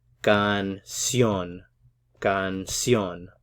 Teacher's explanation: A little bit more emphasis on that last syllable.